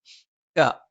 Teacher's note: ക നാവിന്റെ ആരംഭം മേലെ അണ്ണാക്കിലാണ്